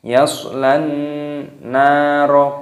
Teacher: terdapat Nun yang berharakat tasydid dan disini dibaca hunah yaitu berdengung